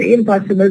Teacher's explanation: the na alveolar becomes ma bilabial because it is followed by bilabial sound, which is the ba here.